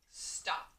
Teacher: So when I say stop, I hear ah, which is just short O.